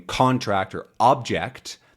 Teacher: when they have the stress at the beginning, like in contract or object, that is a thing.